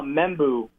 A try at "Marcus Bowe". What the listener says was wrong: He doesn't pronounce the M. Marcus Bowe.